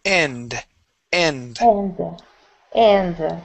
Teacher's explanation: try and remove a little bit of that uh at the end okay so we just pronounce that D